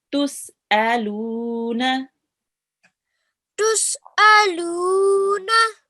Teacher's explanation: We have a sukoon on the vowel, and check before that we have a letter with a stroke, and we prolong the lu here because this is a vowel madhya